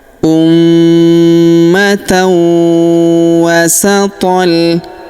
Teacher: Kita tahan dan kita dengungkan dua sampai 3 harakat.